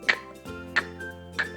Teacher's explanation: há uma interrupção da passagem do ar no fundo da sua boca, né? A língua ela tampa a passagem do ar para esse som de K poder ser produzido.